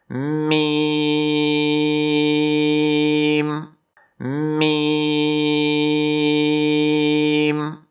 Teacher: ہونٹوں کے خشکی والے حصے سے میم میم۔